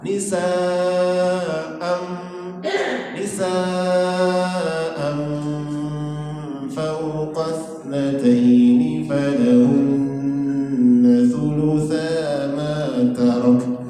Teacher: Jadi ketika membaca amnya itu posisi bibir kita sudah pada makhraj huruf fa. Fa itu gigi atas dan bibir bawah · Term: ikhfa